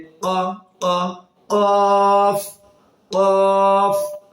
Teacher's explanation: কফ জিহ্বার গোড়া থেকে তার বরাবর উপরে তালুর সঙ্গে মিলিত হয়ে এই হরফটি উচ্চারিত হবে।